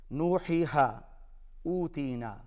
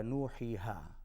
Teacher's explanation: واو، یا اور الف، اس کا مخرج ہے جوف دہن، یعنی اس سے مراد منہ کا خالی حصہ، یہاں سے ادا ہوتے ہیں